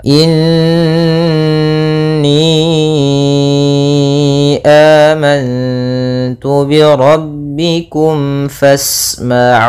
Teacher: ada bacaan gunnah pada nun yang bertasydid, maka langkahnya ada kita tahan dulu gunnahnya 2 harokat